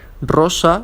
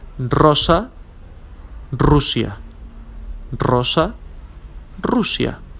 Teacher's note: characterized by a vibrating sound okay like a drill